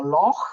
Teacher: a guttural sound at the back of your throat. This is one of these sounds that we don't really have in the English language.